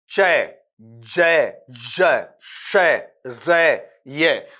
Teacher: लेकिन पैेटल साउंड होता है जहां पर आपका टंग है टंग का जो आपका फ्रंट हिस्सा है वो आपके हार्ड पैेट की तरफ जाता है। · तो ये वर्ड्स तो सॉरी ये आपके जो सिंबल्स हैं, जो प्रतीक हैं, वो तो आपके पास में वहां पर पड़े ही पड़े हैं, लेकिन पैलेटल साउंड होता है जहां पर आपका टंग है, टंग का जो आपका फ्रंट हिस्सा है वो आपके हार्ड पैलेट की तरफ जाता है। जैसे आपने कहा चय, जय, जय, शय, रे, ये, तो यहां पर जीभ है यूं की यूं पड़ी हुई है और ये ऊपर से क्या करती है, ऊपर के तालू को हल्का सा टच करती है, मुड़ती नहीं है।